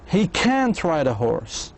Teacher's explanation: Can't is louder and clearer.